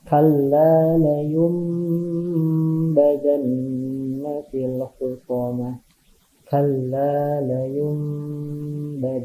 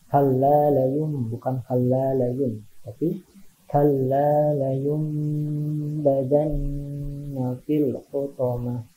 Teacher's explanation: Hurufnya ba. Jadi ketika ada nun mati atau tanwin menghadapi huruf ba, suaranya jadi mim ya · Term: iqlab